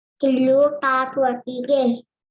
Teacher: Here you would have observed that the sounds t and t were substituted by k wherever they were supposed to be produced according to the target sentence, as well as the sound d in the last word was substituted by the sound g